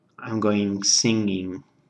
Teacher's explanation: when you say sing, you don't actually have the g there, but it's that nasal in. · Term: nasal G